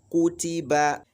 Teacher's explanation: the length of ku is the same as the length of t, and it is also the same as the length of ba